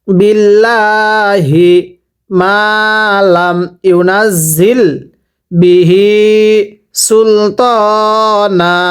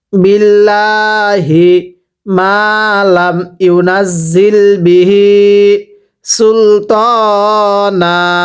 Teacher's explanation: ওয়াকফের সময় দুই জবরের পরে খালি আলিফ থাকলে এক জবরকে বাদ দিয়ে আরেক জবরে এক আলিফ টেনে পড়তে হয়